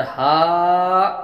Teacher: الف مدہ ہوا، الف سے پہلے زبر ایک، الف کے برابر کھینچ کر پڑھیں گے